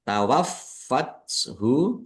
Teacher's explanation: fa-nya ada tasdidnya, dibaca double, ditekan biar tampak doublenya. Tawaffathu rusuluna, nun fathah alif mat tobi'i, panjang 2 harokat.